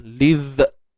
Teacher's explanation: huruf zal ni bersifat rakhawah. Jadi suara kita ni mengalir lah.